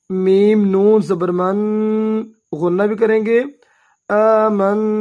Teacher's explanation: 2 حرکات لمبا ادا کریں گے، میم کو نون کے ساتھ ملائیں گے